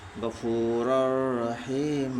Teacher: من ربک غفور الرحیم، را کے اوپر دو زبر کی تنوین ہے، دو زبر کی تنوین کے بعد حروف یرملون کے 6 حرفوں میں سے را ہے، اس لیے دو زبر کی تنوین کو بلا گناہ کے پڑھیں گے ملا کر، اس کو ادغام تام بلا گناہ کہتے ہیں۔